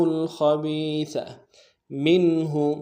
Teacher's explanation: میم کو نون ساکن کے ساتھ ملانا ہے، نون ساکن میں یہاں پہ اظہار ہوگا